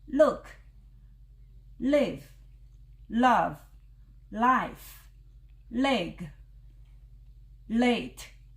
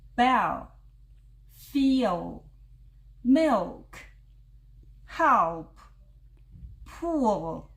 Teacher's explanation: called Dark l sound such as Bell feel milk help pool this l sound is much deeper and it sounds similar to R